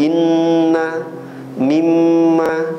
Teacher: maratibul gunnah kalau keadaan mim dan nun ini ditasydidkan, itu level tertinggi. Gunnahnya lebih kuat ya.